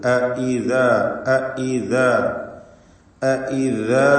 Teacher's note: ഹംസകളൊക്കെയും വളരെ ക്ലിയറായി മൊഴിയണം. നേരത്തെ സൂചിപ്പിച്ച പോലെ ഐദ ഐദ എന്നൊന്നും ആയി പോകരുത്.